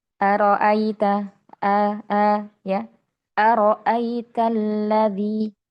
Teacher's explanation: Kemudian yang ketiga adalah tahqikl hamzah ya, yakni penegasan pada huruf hamzah. Jadi hamzah harus jelas, tidak samar, potongannya tegas, tidak ee seperti misalnya araita a a ya araitalladzi.